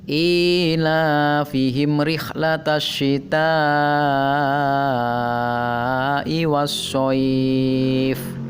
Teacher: Kata sitai di sana ada hamzah yang didahului oleh alif atau dalam satu kata, maka ta-nya dibaca panjang 5 harokat. Nah, itu adalah contoh mad wajib muttasil.